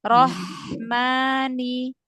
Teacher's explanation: Karena hak itu punya sifat hamas, mengalir nafas, punya sifat rokhwah, dialirkan suaranya.